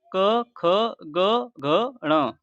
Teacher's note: जिन वर्णों का उच्चारण करते समय जीभ का पिछला हिस्सा हमारे कंठ को छूता है, उन्हें कंठ्य व्यंजन कहते हैं।